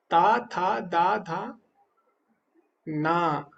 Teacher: ना आप बिना नासिका के नहीं बोल सकते ता था दा धा ना तो ना में नासिका भी लगती